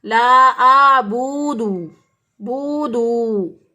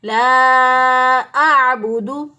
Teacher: اور بعض لوگ اس کو پڑھتے ہیں لا اعبد، بودو، با کو بھی لمبا کر کے واو اس کے ساتھ شامل کر دیتے ہیں، اور دال کو بھی لمبا کرتے ہوئے اس کے ساتھ واو شامل کر دیتے ہیں، تو یہ غلط ہو جائے گا. نہ ہم با کو لمبا کریں گے اور نہ ہی دال کو لمبا کریں گے. صحیح ادائیگی ہوگی لا اعبد.